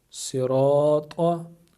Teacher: را کو ہم پور پڑھیں گے کیونکہ را کے اوپر زبر ہے